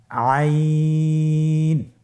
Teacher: আইন হরফটি কণ্ঠনালীর মধ্যখান থেকে উচ্চারিত হয়।